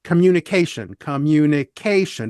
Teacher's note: five syllable word communicate the fourth syllable gets stressed